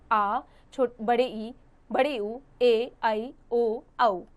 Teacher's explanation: दीर्घ स्वर यानी लॉन्ग वोवेल्स। इनका उच्चारण करने से ह्रस्व स्वरों की अपेक्षा अधिक समय लगता है।